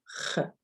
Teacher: there's no English equivalent, but it comes from the back of your throat. It's like a really hard ch sound.